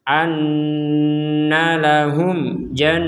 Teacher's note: Mim mati bertemu jim, kita jelaskan. Jadi harus dibaca jelas, tidak boleh didengung. · nun wajib dengung, ditekan dan didengungkan kurang lebih dua harokat